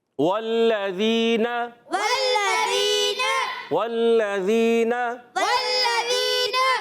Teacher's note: لام مشدد ذرا رک کر ادا کریں گے